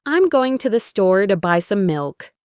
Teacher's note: while I'm, to the, and to buy some are faster and softer